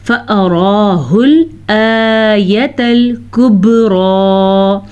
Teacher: कुबरा में बा साकिन है और बा पे कलकला हो रहा है, उसके साकिन होने की वजह से मैंने आपको बताया था।